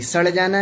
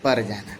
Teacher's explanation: पूर्वी हिंदी, बिहारी हिंदी में ड़ र में बदल जाती, सड़ जाना नहीं सर जाना, पड़ जाना नहीं पर जाना।